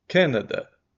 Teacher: Olha o sem vontade, o schwa está em todas · O A, apesar de estar escrito A na palavra, não é aberto